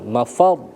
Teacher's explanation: ra ketika dia disukunkan maka ketika huruf sebelumnya berharokat fathah ataupun dhamma maka ditebalkan